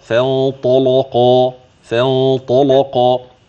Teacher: يبقى الطاء مفتوحة هتفخم، ماشي أصلها، واللام بعدها تبع